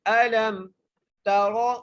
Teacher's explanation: سورۃ الفیل مکیہ، بسم اللہ الرحمن الرحیم، الم تر کیف، الم تر، حمزہ کے اوپر زبر ہے اور لام کو میم سے ملانا ہے۔ الم تر، را کو موٹا کر کے پڑھنا ہے کیونکہ را کے اوپر زبر ہے